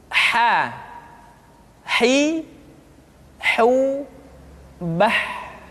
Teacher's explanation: Huruf ha dikeluarkan dari tengah-tengah tenggorokan. Tengah-tengah tenggorokan.